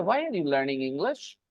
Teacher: So learning and English, these two words get extra stress, and that's why the rest of the three words, why are you, they become less important